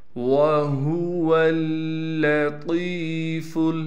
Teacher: وَهُوَ اللَّطِيفُ، واو کو صاف کر کے پڑھنا ہے، ہا کو گلے سے نکالنا ہے، وہ حصہ جو سینے کی جانب ہے، پھر واو کو آگے لام سے ملائیں گے، لام پر تشدید ہونے کی وجہ سے تھوڑا ٹھہراؤ کریں گے، پھر طا کو یا سے ملائیں گے، طا کو ایک الف کی مقدار کھینچیں گے۔